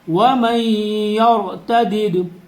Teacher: را کو پر پڑھیں گے، را سے پہلے زبر آ رہا ہے۔